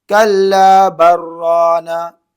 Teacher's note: बा को डायरेक्ट रा में मिला दिए